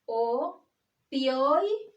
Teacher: Como la fuerza de voz está en la penúltima sílaba, es una palabra llana o grave.